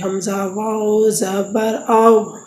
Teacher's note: دونوں ہونٹوں کو گول کر کے نہ تمام بند کرنے سے، مطلب ان کو گول کرنا ہے لیکن پورے بند نہیں ہوں گے، حمزہ واو زبر آو۔